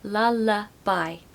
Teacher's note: Lullaby should be 3 syllables, lullaby, and we need a schwa sound in the middle